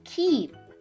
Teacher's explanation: when I say the sound the front of my tongue is high and very near to my tooth ridge the tooth Ridge is that bump right behind my top front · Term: long e